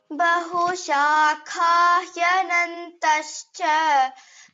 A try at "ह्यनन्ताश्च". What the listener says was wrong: Hyanantascha. Ta is dirgha.